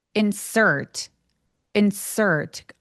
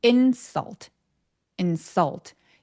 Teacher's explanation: 근데 insult 얘는 혀가 들려 있으면 안 돼요.